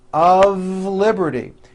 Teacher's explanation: even though the word of is spelled with an F we pronounce the word of with a voiced V · notice how I connected the word of with the word liberty.